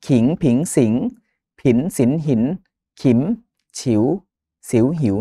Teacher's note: อักษรสูงเมื่อเอ่อเป็นคำเป็นปุ๊บเนี่ยมันจะเป็นเสียงจัตวา